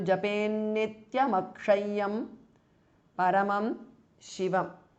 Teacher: Now Nityam ends in M and Akshayam starts with A. So these two join together to form Ma. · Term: sandhi